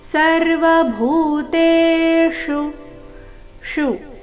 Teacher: ಶು ಇಲ್ಲಿ ಮೂರ್ಧನ್ಯ ಶಕಾರದೊಂದಿಗೆ ರಸ್ವ